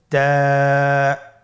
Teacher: জিহ্বার আগা সামনের উপরের দুই দাঁতের গোড়ার সঙ্গে লাগিয়ে উচ্চারিত হয় · তা হরফটি বারিক হরফ এবং এক আলিফ টেনে পড়তে হবে